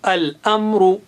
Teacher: را موٹا ہے اور آ صاف آنا چاہیے